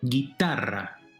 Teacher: where's the stress? It's the second to last syllable, right? And we said those are llana words or grave words.